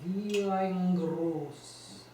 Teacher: Let's elide ein, wie ein, so it really is a y